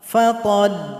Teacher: Sukunkan huruf lam, huruf sebelumnya tekan saja ke huruf lam.